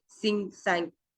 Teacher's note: The last sound of ng in the sang and sing is produced under the velar, where the back of the tongue touches the soft palate